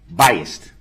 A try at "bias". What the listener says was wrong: No, bias. B-I-A-S. There's no T at the end. Bias.